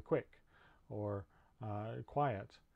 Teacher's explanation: this sound is voiceless it is a stop and it's made at the soft palate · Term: the k sound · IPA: /k/